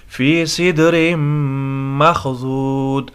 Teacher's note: حروف قلقلہ میں سے دال بھی ہے اور ساکن بھی ہے تو یہاں پر قلقلہ ہوگا